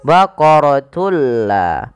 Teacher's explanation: memasukkan suara tanwin pada lafal baqaratun ke huruf la. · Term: idgham bila gunnah